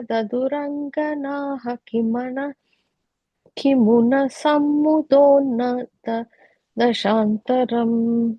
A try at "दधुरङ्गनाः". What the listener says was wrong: That last line, Daduranganaha, that visarga is there, right? That will take a H sound. Daduranganah. No, you are saying Angana. You're saying Daduranganaha. You are saying Daduranganah. Yeah, essentially that when ka is coming later, ka or ka, either of those are coming later, there's a visarga in front, you literally replace it with a H. So it ends with a H.